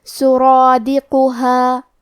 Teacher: کلمت سرادقها میں کیونکہ را کا حکم ہے تفخیم، تو ہمیں حرف الرا کو اور مد الف کو دونوں کو موٹی آواز میں پڑھنا ہے